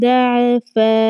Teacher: آگے چلیے فیکم ضعفا، اب یہاں پر عین کے اوپر نہ تو ہم نے کوئی زبر لگانی ہے، نہ زیر لگانی ہے، نہ ہی کوئی اور حرکت ہم نے لگانی ہے۔ بغیر کسی حرکت کے لگائے ہم نے عین کو ظاہر کرنا ہے